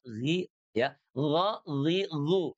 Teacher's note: Maka yang fathah itu dia jauh lebih tebal, jauh lebih kuat ya.